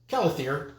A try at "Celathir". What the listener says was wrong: Celathir. Like celery. He keeps calling me Kella. He keeps pronouncing it as a K. It's supposed to be an S.